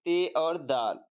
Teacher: اب بین دنتی کے بعد ہے راس دنتی، جس کو دندانی یا دنتی بھی کہہ سکتے ہیں کہ تے سے۔ راس زبان اور اوپری دانت سے ادا ہونے والے